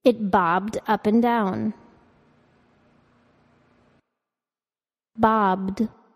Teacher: ending to be pronounced as a voiced d